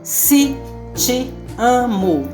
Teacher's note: Veja, o se te amo, que deveria se escrever C com E, T com E, amo com O no final, escreve-se, fala-se se te amo, com I no si, com I no ti e com U no final de amo.